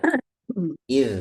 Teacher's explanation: jadi dzal itu di gigi atas Bu ya